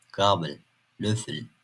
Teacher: Sözcük sonlarında görülebilen el sesleri ıl gibi okunur.